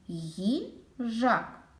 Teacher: їжак у слові їжак два склади наголос падає на другий склад перший склад перший звук ій приголосний м'який другий звук і голосний далі гіжак звук Ж твердий приголосний їжак а голосний і останній